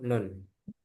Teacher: huruf nun keluar dari ujung lidah bertemu gusi atas dan keluar dari rongga hidung.